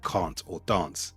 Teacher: The second feature is that broad A. Take a word like can't or dance. That A in the middle will be stretched.